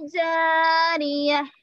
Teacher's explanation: हाय साकिना बना दिया ता मरबूता को, और इस पर 2 पेश है, आयत आने की वजह से हा साकिन।